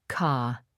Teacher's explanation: In many accents of British English, the R sound is not pronounced after a vowel, A, E, I, O, U, especially at the end of a word.